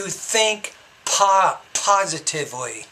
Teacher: The P you need to pronounce with a little bit more air.